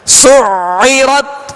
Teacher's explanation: عین کو وسط سے حلق سے ادا کرنا ہے.